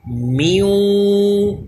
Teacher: میوں ناک میں آواز لے کر جا رہے ہیں، یہ غنہ ہے